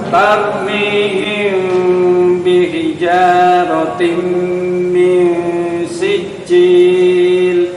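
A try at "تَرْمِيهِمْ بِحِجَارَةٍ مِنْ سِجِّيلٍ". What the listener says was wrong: Agak lama. Bihijaratin min sijil. Agak santai mawon. Mihim seperti itu. Bihijaratin, tanwin bertemu mim, bacaan idham bigunnah. Yang agak lama baca dengungannya, monggo diulangi. Mihim, minyak mihim seperti itu.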